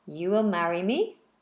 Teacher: you know it's a question because they do the rising intonation